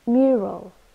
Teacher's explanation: mural this is a noun with two syllables and we stress the first one